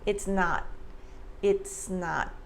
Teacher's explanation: So the S in it's links to the N sound in not. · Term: linking and blending